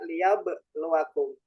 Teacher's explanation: ada qalqalah sughra. Ada ba yang dimatikan. Matinya asli.